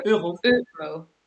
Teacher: And the R is throaty.